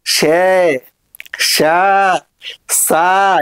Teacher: ఇరుకైనటువంటి సందు ద్వారా శ్వాస నిర్గమించడాన్ని అప్పుడు జరిగినటువంటి ప్రయత్నాన్ని ఏమంటారు అంటే ఉష్మిత ప్రయత్నం అని అంటారు. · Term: ఊష్మిత ప్రయత్నం